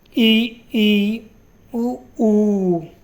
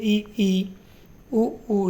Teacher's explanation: जिन स्वरों के उच्चारण में मुख द्वार लगभग बंद रहता है उन्हें हम क्या कहते हैं? संवृत्त स्वर कहते हैं।